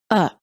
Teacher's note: the vowel within the unstressed syllable is reduced and becomes a neutral short vowel called the schah and is pronounced as uh it can be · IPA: /ə/